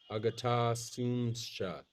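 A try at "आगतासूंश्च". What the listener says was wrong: That's no, there's no cha. Forget the cha. Agatasoonsh.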